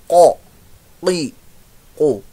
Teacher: जुबान की जड़ ऊपर नरम हिस्से पर जो है वो नरम हिस्सा शुरू होता है, वहां तालु का, वो तालु ही होता है ऊपर प्लेट, तो वहां पर लग दिया कौ। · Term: कौफ